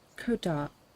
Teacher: The k comes out like a h, very soft, duh, and then the t gets stuck on the tip of your tongue. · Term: Eckler accent